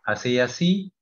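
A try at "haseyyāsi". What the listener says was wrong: 你 要 念 ▁Haseya ▁si， ▁要 长 ▁Haseya ▁si ▁啊 ， 再 念 一 下 。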